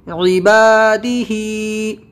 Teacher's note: اس میں با الف زبر با کھینچنا ہے اور ہا کھڑی زیر ہی کھینچنا ہے، دال اور عین کو نہیں کھینچنا ہے